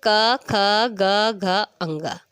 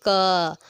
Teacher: कंठ मीन्स गले से इसकी आवाज़ आती है